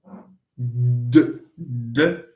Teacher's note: d is a voiced alveolar